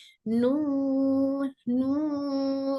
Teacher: इसमें नाक का भी नाक भी शामिल हो जा रही है हमारी नून पढ़ते वक्त आवाज नाक में भी जाती नू न ये दिख रहे लाइनस ये वाइब्रेशन लाइनस वाईफाई वाईफाई